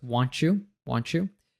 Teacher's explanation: We have want and you go together. This happens very commonly because we have a T plus a Y and the U reduces.